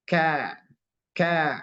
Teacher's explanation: longgar ada jarak ada rongga kemudian alistifal ini kebalikan dari istila kalau istila lidah dia terangkat ke atas itulah huruf q tapi ini lidah kita datar ka ka sampai ke pelataran mulut dan pengucapannya dia agak tertahan